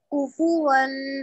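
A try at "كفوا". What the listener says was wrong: Don't extend kufu. Don't kufu. Kufuwan.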